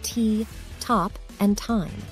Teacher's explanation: Let's start with the most common pronunciation of T, which is the unvoiced dental plosive. This sound is made by touching the tip of your tongue behind your top front teeth and releasing a quick burst of air.